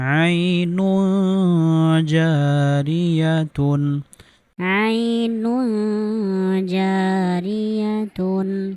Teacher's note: তানবিনের পরে ইকফার হরফ জিম আসার কারণে আমরা তানবিনকে গুন্নাহ সহ গোপন করে পড়েছি